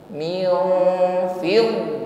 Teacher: nun sukun kita samarkan pada huruf Fa pertemukan ujung gigi dengan bibir bawah m fidho Fid huruf d tasdid kita tekan pada huruf dad